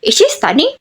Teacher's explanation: auxiliary verb move into the beginning the final intonation rises